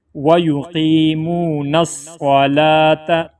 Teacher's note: وَيُقِيمُونَ الصَّلَاةَ، یہاں پہ واو ہے، واو کی کوئی حیثیت نہیں ہے یہاں پہ، بس صرف لکھنے میں لکھا جائے گا لیکن پڑھا نہیں جائے گا، صرف لام کو کھینچ کے پڑھیں گے 1 الف کی مقدار، کیونکہ اس کے اوپر کھڑا زبر ہے۔